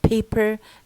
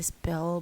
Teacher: aspirated as in paper and not aspirated as in spell because once you add an S before p p loses this aspiration